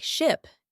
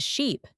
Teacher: One very common mistake is mixing up similar vowel sounds, like ship and sheep. Yes, ship is short, like the sound in it. But sheep has a long E sound, like in sea.